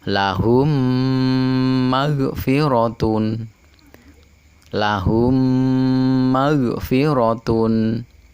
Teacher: mim bertemu dengan huruf mim dan harus dibaca dengung dua harokat ini disebut dengan Idgham Mutamatsilain untuk selanjutnya hukum mim mati yang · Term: idgham mutamasilain